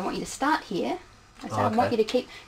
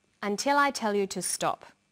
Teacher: did you hear the falling tone at the end